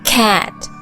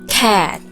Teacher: seperti percampuran antara A sama E